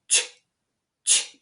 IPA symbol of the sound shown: tʃ